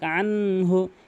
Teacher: যেমন আনহু এখানে অধিকাংশ আনহু এখানে গুন্না করা যাবে না। কখনোই গুন্না করতে পারবেন না। নুন সাকিনের পর হা রয়েছে।